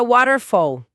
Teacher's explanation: aquele T intervocálico ganha uma vibração suave, o famoso flap T, que soa quase como um R brando para nós brasileiros